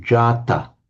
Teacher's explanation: The double irregularity is firstly that the n is lost and secondly that the a is lengthened so we get jatta.